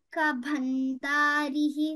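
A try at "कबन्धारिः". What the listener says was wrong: No, only dhakara you should stress.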